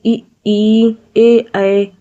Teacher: जिन स्वरों के उच्चारण में जीभ का अगला भाग ऊपर उठता है उन्हें अग्र स्वर कहते हैं। जैसे इ ए इसमें जीभ का अगला भाग ऊपर उठ रहा है तो इसे अग्र स्वर कहेंगे।